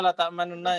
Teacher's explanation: bacaan ikhtilas adalah bunyi nun yang pertama yang berharokat dhammah dibaca dengan suara kurang lebih 2/3-nya